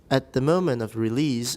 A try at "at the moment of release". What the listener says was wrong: moment 不要太重. At the moment of release.